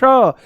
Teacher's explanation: मूर्धा श, जीभ को थोड़ा घुमा करके ऊपर श